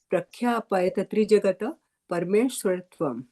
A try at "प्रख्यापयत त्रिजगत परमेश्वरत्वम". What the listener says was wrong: प्रख्यापयत त्रिजगतः, त नहीं बोलना है। धीरे धीरे बोलिए, धीरे धीरे।